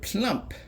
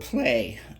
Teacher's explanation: when you add a sound like the P in front and make that word plump, that L loses some of its voice and it becomes a voiceless. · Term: voiceless L